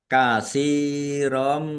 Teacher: Tsa kasrh ya sukun mad thobi'i panjang dua harakat. Fathah tanwin bertemu dengan huruf mim. Idgham bighunah masuk dengan mendengung yaitu mendengung mim ditandai mimnya ada tasdidnya ya.